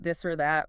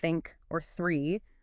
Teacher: The voiced one like in this or that where your vocal cords vibrate and the unvoiced one like in think or three which is just air. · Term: two distinct th sounds